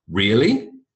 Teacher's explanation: If you don't believe someone, you go, really? Up intonation.